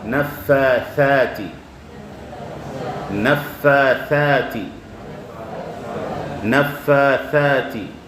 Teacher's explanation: your tongue slightly comes out from and touches the upper front teeth